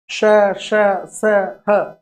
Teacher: इनके उच्चारण में भाषण अवयव, मुख के जो वाग यंत्र हैं वो एक दूसरे के समीप आ जाते हैं, निकट, स, स, ह, बहुत नजदीक आ जाते हैं। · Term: ऊष्म ध्वनियां